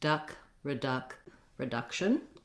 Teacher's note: Then when we look at reduction, we also have second syllable stress, and the duck syllable is the stress syllable. So the same thing is going to help you is starting with duck and then adding the r, duck, reduc, reduction.